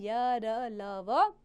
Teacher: हिंदी वर्णमाला में य, र, ल, व अंतस्थ व्यंजन है बच्चों। इन व्यंजनों का उच्चारण न तो स्वरों के समान ही है और न ही पूर्णतः व्यंजन के समान है। ये वर्ण स्वरों एवं व्यंजनों के मध्य में स्थित है।